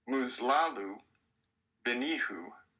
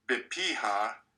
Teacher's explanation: The third person singular masculine and feminine pronoun suffixes also look similar, differing only in their last vowel. The masculine has a short U and the feminine has a short A.